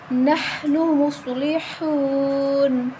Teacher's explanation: صاد حروف مستعلیہ ہے موٹی پڑھی جائے گی